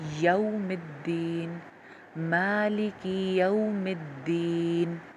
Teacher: اس کو یوم نہیں کہنا, عام طور پہ خواتین یوم الدین, یو بولنا ہے. یا کے لیے ہونٹ کھلیں گے اور اس کے بعد واو کی جو ادائیگی ہوتی ہے اس کے لیے ہونٹ میکسیمم گول ہو جاتے ہیں, بالکل راؤنڈ ہو جاتے ہیں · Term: واو لین